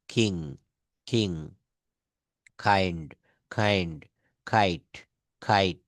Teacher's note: এটাকে কিং বলা যাবে না, খ দিয়ে বলতে হবে